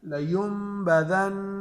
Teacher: اچھا ہم نے پہلے پڑھا تھا کہ جہاں پہ نون مشدد ہوگا اگر ہم اس پر وقف کریں گے تو وقف کی صورت میں اس کی حرکت تو ختم ہو جائے گی لیکن غنہ باقی رہے گا. لیمبذن اب دیکھو حرکت نون سے ختم ہو گئی لیکن وقف پھر غنہ پھر بھی باقی رہتا ہے.